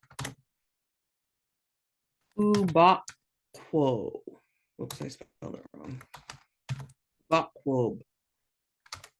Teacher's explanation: it's going to be back of your throat but you're going to be rounding your mouth because it's got that floating W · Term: Q raised W